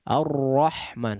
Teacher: ro ini memiliki sifat disebutkan di sini memiliki sifat taqrir yang pertama yaitu Getaran yang halus bersamaan dengan sifat tawasut ya jadi ada aliran suara yang tidak betul-betul deras mengalir tapi · pertama yaitu Getaran yang halus bersamaan dengan sifat tawasut ya jadi ada aliran suara yang tidak betul-betul deras mengalir tapi juga tidak betul-betul terhenti ada aliran suara sedikit tidak mati tidak juga ar-rahman atau Arrahman